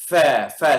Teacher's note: Dari ujung gigi siri atas sama perut bibir bawah akan keluar huruf fa.